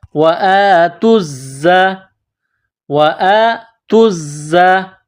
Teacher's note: زا میں سیٹی کی آواز پیدا کرنی ہے